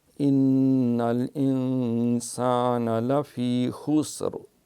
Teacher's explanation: ان یہاں نون کے اوپر شد ہے لہٰذا نون گنہ ہوگا